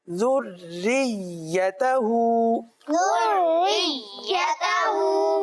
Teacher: यहाँ पर रा पुर नहीं होगी, बारीक होगी